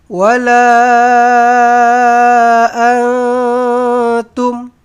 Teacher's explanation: Dia bukan izhar dia ikhfa hakiki. Nun kosong bertemu dengan ta. Maka kena samar-samarkan, kena dengungkan.